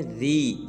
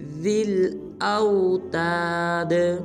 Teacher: دال کو آگے لام ساکن کے ساتھ ملائیں گے